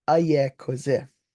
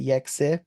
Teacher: their word is in ayekoze for he or she is tired. But as vowel droppers, we'll say yekse.